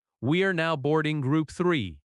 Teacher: "We are now boarding group three." The important words are now, boarding, group, and the number. In natural American speech, we are often reduces to we're. "We're now boarding group three." Boarding has stress on board, boarding.